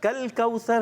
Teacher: کل موٹا نہیں کرنا، قل کوثر موٹا ہو جائے گا تو یہ غلط ہو جائے گا